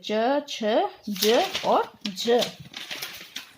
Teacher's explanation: जो प्राण वायु है स्पर्श के साथ साथ रगड़ खाकर यानी घर्षण के साथ बाहर निकलती है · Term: स्पर्श संघर्षी